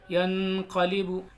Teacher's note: हम वहां पर गुन्ना करेंगे यानी नून को नाक में छुपा कर पढ़ेंगे · نون کو ناک میں چھپا کر پڑھیں گے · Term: اخفا